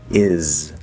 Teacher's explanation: It is supposed to be a Z sound, even though it's spelled with an S. Is. So when we connect that Z to it, we're supposed to hear zit.